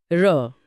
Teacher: र बोलते समय जीभ तालू पर कांपती है या लुढ़कती है। इसीलिए इसे लुंठित कहते हैं।